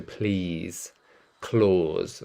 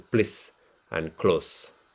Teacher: notice that in the British accent we tend to elongate the vowel sound